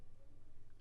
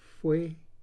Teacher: So instead of fe, we might round our lips and make the sound fue.